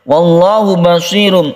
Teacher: lam jalalah yang kita baca tafkhim atau tebal karena ada lafaz Allah, sebelumnya ada fathah.